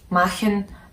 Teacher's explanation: CH is not like, you know, you'd pronounce it in chair in English, but it's a H sound